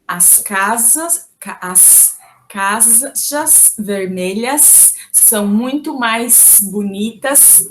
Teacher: a letra S, ao final das sílabas, é pronunciado com um som de sh, diferentemente de outras partes do Brasil, em que soa como S. Por exemplo, no sotaque dessa região, uma frase como as casas vermelhas são muito mais bonitas do que as amarelas seria pronunciada com todos esses S's finais com um som chiado.